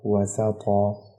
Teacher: دو زبر پر جب وقف کریں گے تو ایک زبر ہٹ جاتا ہے، ایک زبر کو ایک الف کے برابر کھینچ کے پڑھتے ہیں، الف انہوں نے پہلے سے اسی وجہ سے دیا ہوا ہے آپ کو، مثلا وسقن آگے وقف وسقا۔